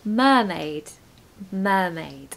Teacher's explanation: because the syllable is stressed, we don't need a schwa. We're just going to have a really strong sound, no R